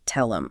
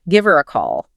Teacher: if you're listening for that H sound, you're just going to miss the whole thing because it isn't actually there most of the time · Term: elision